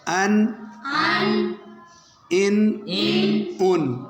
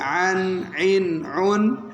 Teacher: اب بچو حمزہ اور عین کا مخرج قریب ہے، حمزہ کا مخرج حلق کا شروع والا، ابتدا والا حصہ، اور عین کا درمیان والا